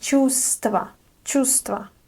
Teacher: this word has 3 consonants together, which can be tricky to pronounce. But in this word, we don't pronounce this v. So we say чувство, чувство.